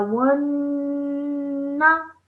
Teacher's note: So I'm holding the nasal sound because of the noon gunna